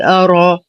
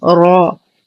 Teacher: نرقق الهمزة ونخلصها من تفخيم الراء